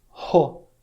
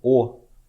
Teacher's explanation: Para você saber se está soprando adequadamente, você pode botar a mão na frente da boca e você vai falar, então, Ho, em vez de O. Bota a mão na frente da boca e fala O, e depois fala Ho, soprando enquanto fala o som do O. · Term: soprado